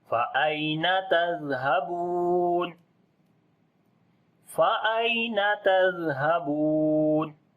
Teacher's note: زال کو نرم پڑھیں گے اور زال کے اوپر صفت رخاوت کریں گے